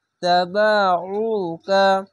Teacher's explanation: আইনটিকে গলা চিপে মোটা করে পড়বেন